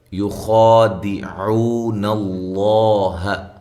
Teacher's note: خا کو موٹا پڑھنا ہے اور اس کو باریک نہیں کرنا، اور ایک الف کی مقدار کے برابر اس کو لمبا کرنا ہے۔ یخادعون اللہ، یہاں عو و مدہ ہے، عو اس کو بھی ایک الف کے برابر لمبا کرنا ہے۔